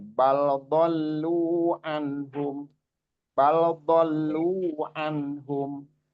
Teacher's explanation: Ya dolu itu agak kepanjangan ya.